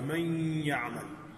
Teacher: مع الغنہ، کہ اس طرح کا ادغام ہے کہ جس میں غنے کی آواز یعنی ناک کے اندر سے ہو کے آواز آ رہی ہے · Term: ادغام مع الغنہ